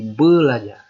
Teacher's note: Tetapi begitu dia bertemu jadinya bel. Artinya fonem R berubah menjadi fonem L.